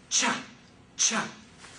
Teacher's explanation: in order to make CH you need to begin with the T the T sound and the Sha